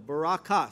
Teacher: The emphasis, the accent is on the last syllable